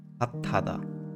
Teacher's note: So there is no S pronunciation, it's simply T, right? Like a subtle T.